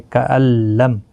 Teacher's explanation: نون ساکن نہیں پڑھا جائے گا کیونکہ نون ساکن کے بعد حروف یرملون کا لام آئے، ادغام ہوگا لیکن گنہ نہیں ہوگا، تو یہاں پر نون ساکن جو ہے نہیں پڑھا جائے گا، حذف ہو جائے گا.